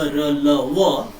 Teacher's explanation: अंतस्थ मतलब बीच की स्थिति। ऐसे व्यंजनों के उच्चारण में जीभ मुख के किसी भी भाग को पूर्णतः स्पर्श नहीं कर पाती है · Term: अंतस्थ व्यंजन